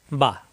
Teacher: দুই ঠোঁট থেকে উচ্চারণ দুই ঠোঁট মিলানো ঠোঁট ছেড়ে দিলেই হয়ে যায়